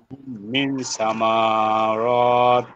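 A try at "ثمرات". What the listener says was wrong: সামা ভাইয়া হরকতুল লং হয়ে যাচ্ছে না?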